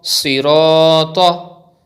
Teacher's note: Sad, zir, si, ra, alif, zabar ra, sira, ta, zabar ta, sirata. In this word, sad is also thick from mustaliya letters and you have to read ra with thick tone because it has zabar on it. And then you can see zabar before alif, so it is alif madda.